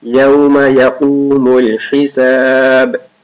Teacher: قاف is thick and ح is sharp.